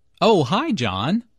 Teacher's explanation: Notice the rising intonation here. is excited to hear from John and is very pleased that he called her.